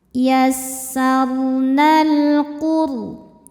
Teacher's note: Sebab alif lam menghadapi huruf qamariah yaitu qof. Cara bacanya lam dibaca dengan izhar atau jelas.